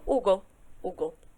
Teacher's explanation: O H é como o português, então ele não vai ter som, mas o nome dele é H, tá?